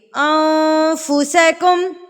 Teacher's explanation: اس زبان کو آپ نے ہوا میں چھوڑ دینا ہے. آپ نے اس کو اوپر ٹچ نہیں ہونے دینا. تو آواز آٹومیٹکلی جو ہے وہ ہمارے ناک میں چلی جائے گی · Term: اقفا